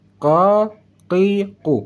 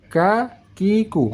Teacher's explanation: Tetapi pangkal lidah saat kita membaca huruf saat kita membaca huruf qaf naik ke langit-langit bagian belakang. Makanya saat kita membaca huruf qaf suaranya lebih tebal daripada bacaan huruf kaf.